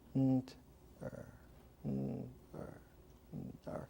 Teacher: in the sacred hieroglyphic language of the old Egyptian wisdom, you would just pronounce nt-er without making the t